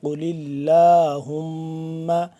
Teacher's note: قل اللہم، ہا میم پیش ہم، میم زبر ما، ہم میم مشدد ہے، اس پہ ہم غنہ کریں گے۔ قل اللہم، لام کھڑا زبر لا، اس کو تھوڑا سا لمبا بھی ہو رہا ہے۔